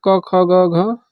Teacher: क वर्ग के उच्चारण में तो जो हमारी ध्वनि है कंठ से निकलती है, तो कंठ वर्ग भी कहा जाता है, ठीक।